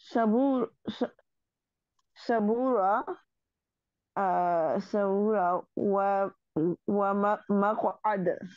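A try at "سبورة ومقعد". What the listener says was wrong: We only don't read the last vowel. So here read the vowel. Saburatun wa maqad.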